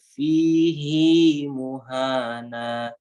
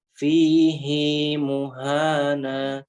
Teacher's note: sebelum hak domirnya itu adalah ya sukun, tapi hi-nya tetap dibaca panjang.